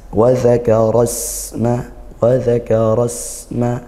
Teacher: wakaro di situ ada ro berharakat fathah kita tafkhimkan tebal isma di situarasma di situ ada sin sukun kita alirkan suaranya dan juga desiskan nafas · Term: hames